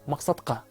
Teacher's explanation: Албетте, бул тарабында айрым белгиси боюнча окшош. Жумшак г тыбышы каткалаң т тыбышына башыйды дагы, ага окшошту, жыйынтыгында каткалаң к тыбышына өзгөрүлдү. Мында албетте бардык белгиси боюнча эмес, айрым белгиси боюнча гана окшошту. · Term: жарым гана окшошуу